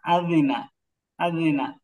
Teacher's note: উম, জালের মাখাসটা ভাই জিহুবার আগা সামনে দুই দাঁতের আগা লাগবে